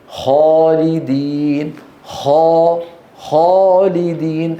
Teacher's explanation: الالف مفخمه لماذا قبلها مفخم وهو الخاء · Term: الألف مفخمة